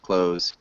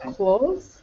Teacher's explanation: you can almost get rid of the THS or TH sound for a Z sound